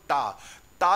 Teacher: जब भी आप टा बोलते हो तो जीव आपकी उल्टी होके कहां स्पर्श करना चाहती है, मूर्धा में, तालू में नहीं स्पर्श करती। आप बोलो टा, ता जैसे ही बोलोगे तो आपकी जो जीव्या है वो मुड़ के कहां स्पर्श करना चाहती है, आपकी जो जीव्या है वो तालू के पीछे स्पर्श करना चाहती है, मूर्धा वाले स्थान पर। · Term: मूर्धन्य व्यंजन